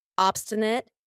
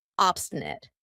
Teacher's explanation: notice how I pronounce it with a schwa at the end